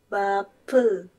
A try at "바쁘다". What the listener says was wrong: 프가 아니고 뿌. 바쁘다.